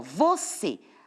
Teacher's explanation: Você, a última letra é um E. A gente já viu que o você, a sílaba mais forte é a última. Então, é uma oxítona.